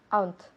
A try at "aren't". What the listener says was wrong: Aren't. Decimos aren't con 2 sílabas. No, nunca. So, 1 syllable. Aren't. So, aren't. Now, solo tiene una sílaba la pronunciación. Nunca decimos aren't ni aren't como si fueran 2. Nunca. Resiste la tentación. Resist the temptation. Sé que es muy fuerte, pero es una sola sílaba. Aren't. Aplastamos la E. Aren't. Nunca decimos aren't ni aren't. Nunca.